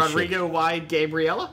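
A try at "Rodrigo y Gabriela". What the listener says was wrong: I think it's Spanish, though. The Y is pronounced E, which is Spanish for and. Rodrigo y Gabriella.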